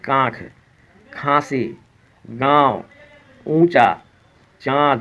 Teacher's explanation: कहां बोलने के समय में नाक से हवा निकल रही है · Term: अनुनासिक